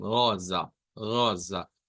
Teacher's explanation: y luego la rosa pues va a sonar con rosa rosa con una o corta más la r gutural